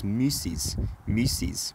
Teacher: the all sound assimilated to the e by fronting moving further forward in the mouth but it retained the lip rounding